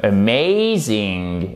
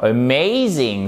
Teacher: Donc, on ne fait pas l'accentuation sur le A. Le A, il est prononcé comme un schwa.